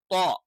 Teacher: മുൻപല്ലുകളുടെ മോണയോട് ചേരുന്ന ആ ഭാഗത്ത് ടച്ച് ചെയ്തുകൊണ്ടാണ് നമ്മൾ ത്വാ എന്നുള്ള ഉച്ചാരണം